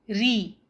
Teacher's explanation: را پر جب زیر یعنی کسرہ ہوگی تو وہ لائٹ پڑھا جائے گا، ری۔ را پر جب زبر یا پیش یعنی فتحہ یا ضمہ ہوگا تو وہ ہیوی پڑھا جائے گا، را، رو۔